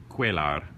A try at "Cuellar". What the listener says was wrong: No, there's no L. Cuellar. Cuellar. Yeah, it's like El Pollo Loco.